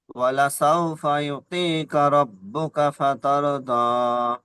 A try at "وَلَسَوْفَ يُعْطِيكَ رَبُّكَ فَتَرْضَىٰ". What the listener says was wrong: হ্যাঁ, মাশাআল্লাহ, সুন্দর পড়েছেন, তবে এখানে একটু টান কম হয়ে গিয়েছে। ওয়ালা সাউফা ইউতি ত ইয়াজের তুই, এটি ইয়া মাদ্দা, এক কালি পরিমাণ টান দেবেন। ولسوف يعطيك ربك فترضى বলেন।